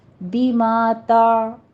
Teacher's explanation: عین کی آواز سٹاپ ہو جائے گی وسط حلق میں جا کر